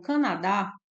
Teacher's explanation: separar as sílabas e destacar a sílaba mais forte então Canadá a sílaba mais forte é o dá